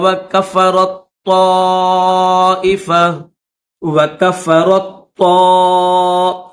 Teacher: میم بنی اسرائیل وکفرت طائفہ, اس میں بھی را کے بعد تا ہے اور تا کے بعد اگلے صفحے پر طا ہے. تو را کے بعد یہ جو تا ہے نا اس تا کو نہیں پڑھیں گے, را کو ڈائریکٹ طا کے ساتھ ملائیں گے.